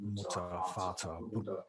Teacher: So you don't really hear the R as pronounced